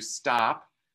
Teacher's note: when we do stop that's going to be non-aspirated